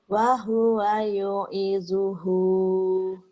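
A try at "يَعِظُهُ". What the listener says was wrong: Bukan yu ya.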